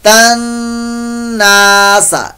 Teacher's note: ता को नून से साथ मिलाएंगे तो नून मुशद्दद का यहां पर गुन्ना भी होगा